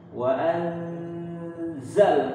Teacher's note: bunyinya di ujung mulut kita ya bukan di rongga hidung wa setiap hukum ikhfa ya kita bentuk ee condong ke huruf